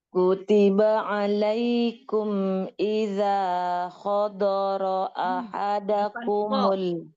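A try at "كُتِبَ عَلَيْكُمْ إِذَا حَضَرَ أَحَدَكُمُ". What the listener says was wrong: Bukan kho tapi ha.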